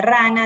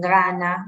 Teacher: o por la G, en vez de rana dicen gana, ¿no? Algo acá en la garganta